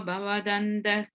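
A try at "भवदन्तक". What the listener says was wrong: Bhavadantaka. I think that Bhavadantaka you left one syllable out or something. Bhavadantaka.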